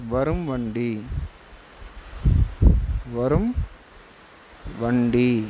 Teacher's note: சரிங்களா இப்ப உதாரணத்துக்கு இதுக்கு என்ன சொல்லலாம் எடுத்துக்காட்டு எடுத்துக்காட்டு வரும் வண்டி வரும் வண்டி இது இருக்கா இந்த இடத்துல இம் உடைய வேல்யூ குறைஞ்சு போயிரும் பா்கறீங்களா இம் தனியா சொல்லி பாருங்க அரை மாத்திரை ஒளிக்கும். வரும் வண்டின்னு சொல்லி பாருங்க இப்போ இதனுடைய மாத்திரை கால் மாத்திரையாக குறைந்து ஒளிக்கும் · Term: மகர குறுக்கம்